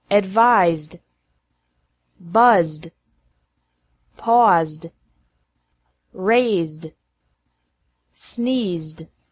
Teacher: ed is pronounced like D after verbs ending with a Z sound.